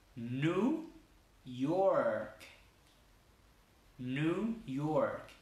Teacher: ¿Sí ven que la R en inglés también es bien larga?